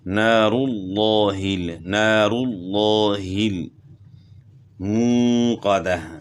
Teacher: اور لفظ اللہ جو ہے نا اس سے پہلے والے حرف کے اوپر زبر یا پیش آ جائے تو اس کو موٹا پڑھنا ہوتا ہے، تو یہاں لفظ اللہ کے لام سے پہلے پیش ہے تو اس لیے اس کو آپ نے موٹا پڑھنا ہے، منہ صحیح خوب منہ بھر کر پڑھنا ہے، نار اللہ نار اللہ موقدہ۔